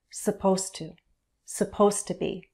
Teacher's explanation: The D links with the T. You'll only hear the T very clearly.